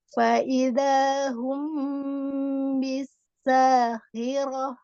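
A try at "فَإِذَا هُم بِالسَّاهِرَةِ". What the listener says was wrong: bisa. Nah, itu jangan ditarik bibirnya. Jadi nggak ada kayak orang senyum gitu.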